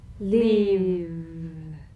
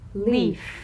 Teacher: If you don't have enough vibration in your V's, they'll end up sounding like the F because they're exactly the same. One has vocal cord vibration, the other is unvoiced.